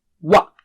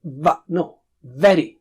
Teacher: Wa, circle of the lips, and then separate them to produce a sound. So first circle and then wa.